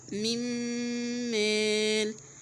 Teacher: المثال التاني اللي هو من مال، طبعا انا ما نطقتش الايه؟ النون، دخلت النون في الميم فبنطق الميم المشددة، فقلت من مال، وهجيب طبعا الغنة بزمن ايه؟ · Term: ادغام بغنة كامل